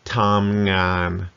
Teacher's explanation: Tamngan, flat tone. Both halves of that word.